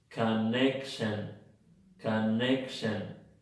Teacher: Bueno, si no las encontraste, están en la primera y en la tercera sílaba. La palabra que lleva la fuerza aquí es la sílaba neck.